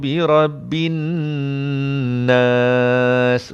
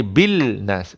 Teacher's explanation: Lam ni kosong, tak payah bunyi. Terus masuk pada nun yang bersabdu. Tak boleh bil nas.